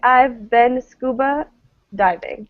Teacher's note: The diving is sort of the thing that's unstressed, I would say.